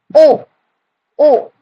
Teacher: मतलब जो जो शब्द होगा वो दोनों से निकलेगा, मतलब ओष्ठ, ओष्ठ का भी मतलब माउथ का भी टच होगा और कंठ से भी निकलेगा शब्द। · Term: कंठ अष्टयो वर्णा